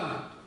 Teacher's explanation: Там нет смычки в конце, просто гласное А выходит.